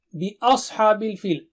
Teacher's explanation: آ باریک ہے اور صاد بہت موٹا اور اونچا ہے۔ اوس نہیں، اس، باریک، اس۔